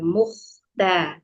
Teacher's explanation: Sedikit memberi catatan ya, tadi di ayat ketiga pada huruf kho yang disukunkan, hati-hati tidak boleh macet dan tidak boleh dipantulkan. Mukhda, tadi kayak kurang dialirkan ya sedikit.